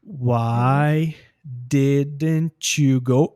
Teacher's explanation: automaticamente você percebe o T do didn't conecta com y do you